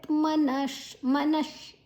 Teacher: ಮನ ಆದ ನಂತರ ವಿಸರ್ಗದ ಉಚ್ಚಾರಣೆ ಶ್, ಮುಂದಿನ ಅಕ್ಷರ ಶಾ ಇದೆ